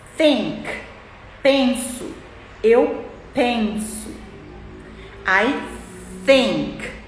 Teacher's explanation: língua entre os dentes e sopra, sem fazer nenhum barulhinho. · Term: unvoiced